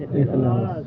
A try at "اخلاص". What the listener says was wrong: خلاص بھی نہیں ہے, اخلاص. یہ اپنا تلفظ ٹھیک کر. اخلاص.